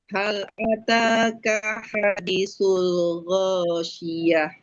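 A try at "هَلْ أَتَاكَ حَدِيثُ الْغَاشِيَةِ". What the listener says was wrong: Diulang. Kak pendek, hadi panjang.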